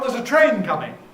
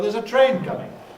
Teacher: the fact that it's coming is perhaps not important the fact is that there is a train about to be here so there's a train coming so we emphasize train